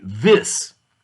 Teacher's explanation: you're touching the teeth on the top but the voice sound when you use the voiced sound as in the word this air passes over the tongue over the tongue between the teeth